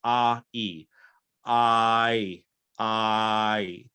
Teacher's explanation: i is not a vowel in and of itself it's two vowels smashed together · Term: diphthong